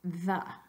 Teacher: feel that first sound tongue between the teeth but your vocal cords are vibrating